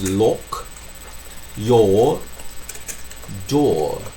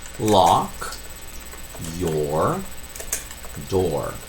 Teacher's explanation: In most American accents, lock and door don't have the same vowel.